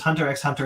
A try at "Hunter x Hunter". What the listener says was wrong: As someone who's watching Hunter x Hunter, you don't pronounce the X. You don't pronounce the X.